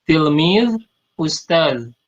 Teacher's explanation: Kalau ustad di Indonesia ya pakai dal, ya. Kita di Arab memakai za yang ada titiknya, jadi tidak qalqalah, tidak dipantulkan. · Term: huruf za